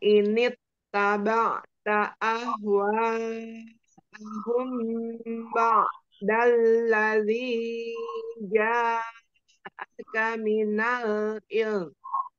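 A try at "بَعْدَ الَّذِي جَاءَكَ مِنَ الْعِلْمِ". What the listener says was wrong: Ya, agak kepanjangan sedikit ya, Mbak. Dalladhi. Dikurangi dua harokatnya.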